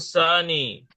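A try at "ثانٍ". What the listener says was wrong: tanwinkan.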